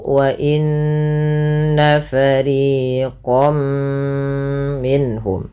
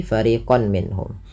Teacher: Kalau huruf setelahnya mim, maka masukkan tanwinnya bunyi nunnya mengganti dengan bunyi mim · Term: idgham bi gunnah